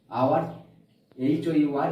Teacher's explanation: এইচ এর উচ্চারণটা হচ্ছিল না, তার পরিবর্তে একটা ভাওয়েল সাউন্ড আসছিল। আওয়ার, HOUR, এইচ এর উচ্চারণটা হচ্ছিল না, আই এর উচ্চারণটা আসছিল।